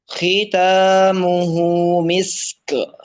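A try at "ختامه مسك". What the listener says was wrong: Jangan misk. Nah, jadi kafnya jadi qalqalah dong. Khitamuhu misk. Khitamuhu misk.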